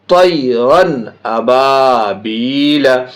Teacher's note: بلا غنہ کا معنی ناک میں آواز نہیں لے جائیں گے اور جلدی پڑھیں گے، آبویسلی جب ناک میں آواز نہیں لے جائیں گے تو وہ جلدی ہی ہوگی اور تبھی اس کی ساؤنڈ کلیئر ہوگی، تو اس کو اظہار کہتے ہیں۔